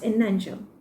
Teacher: We combine the n sound into the other words, which becomes an angel. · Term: linking